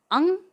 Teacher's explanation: नासिका यानी नाक की सहायता के बिना इनका उच्चारण हो ही नहीं सकता, इसलिए अंग इस व्यंजन का उच्चारण स्थान है कंठ नासिका के साथ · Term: अनुनासिक